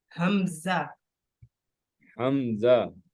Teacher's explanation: देखिए आपके जो थ्रॉट है, हलक है, उसके नीचे वाले हिस्से से अदा हो रहा है